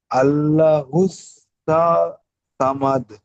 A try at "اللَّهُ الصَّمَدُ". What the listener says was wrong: সামাদ বলবেন না, সমাদ, সমাদ, ঠিক আছে। আর আল্লাহ বলবেন না, এটা হবে আল্লাহ, একালিপ টানবেন, আল্লাহুস সামাদ।